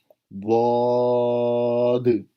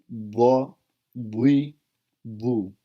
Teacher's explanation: زبان کی سائڈ، ایک سائڈ یا دونوں سائڈیں اوپر والی داڑوں کی جڑوں سے لگیں تو یہ حرف ادا ہوتا ہے۔ یہ عربی میں سب سے مشکل مخرج ہے۔